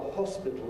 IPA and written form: ˈhɒspɪtl̩ (hospital)